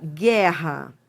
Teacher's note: A consoante é que manda na na na sílaba. Ou seja, realmente você não você não escuta o som do U. Você você escuta o som do G. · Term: dígrafo consonantal